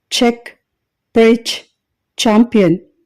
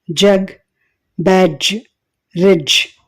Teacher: నాలుక వెనుక భాగం పోస్ట్ ఎల్వులార్ రిడ్జ్ని టచ్ చేసేటప్పుడు ఎఫ్రికేట్ సౌండ్స్ ప్రొడ్యూస్ అవుతాయి